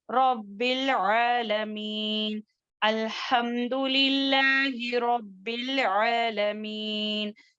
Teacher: رب میں با جو ہے 2 مرتبہ آئے گا کیونکہ وہاں پر مشدہ ہے